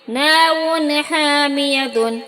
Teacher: یہاں 2 پیش کی تنوین کے بعد حروف حلقی کے 6 حرف میں سے ہا آیا ہے، تو یہاں تنوین کو ظاہر کر کے بلا غنہ کے جلدی پڑھیں گے